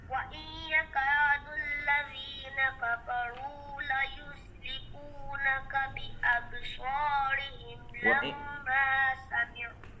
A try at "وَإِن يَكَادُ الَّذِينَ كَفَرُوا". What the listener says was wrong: وَإِن يَكَادْ کا آپ نے غنہ بھی پورا نہیں کیا. وَإِن يَكَادُ الَّذِينَ كَفَرُوا. وَإِن يَكَادُ الَّذِينَ كَفَرُوا.